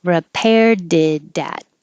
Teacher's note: the T in it changes to a D and connects to the A.